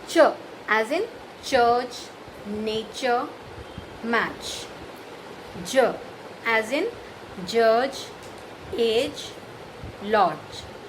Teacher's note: So these are the palato-alveolar sounds.